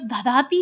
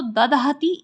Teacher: तो इनमें से ये दोनों एक साथ महाप्राण नहीं रह सकती इनमें से जो पूर्व वाली महाप्राण है वो अल्प प्राण में परिवर्तित हो जाती है तो जो द है उसका परिवर्तन डी में हो जाता है